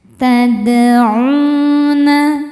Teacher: Cara membaca huruf dalnya ini adalah dipantulkan dengan pantulan yang kecil. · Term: qalqalah sughra